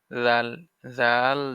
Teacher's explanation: জিহ্বার আগা হতে নরম ভাবে আদায় হবে